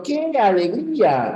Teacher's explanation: empieza con mucha fuerza y luego va bajando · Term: entonación descendente